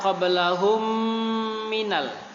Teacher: Idgham mimi, ketika mim sukun bertemu dengan mim ya. Mim sukun bertemu dengan mim, maka ditekan setekan-tekannya, boleh lebih dari dua harokat atau panjangnya 2. Qablahum boleh sepanjang-panjangnya.